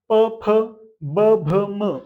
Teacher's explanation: प फ ब भ म. ओठाला ओठ लागतं बघ. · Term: ओष्ठ